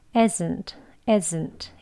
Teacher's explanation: 이즈에 해당하는 즈 소리는 단어 속에서 또는 끝에서 끝날 때 약하게 발음이 되어져요